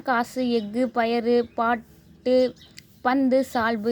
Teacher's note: ஒரு மாத்திரை அளவுல இருந்து குறைஞ்சு அரை மாத்திரை அளவுல ஒலிக்கும் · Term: குற்றியல் உகரம், குற்றியலுகரம்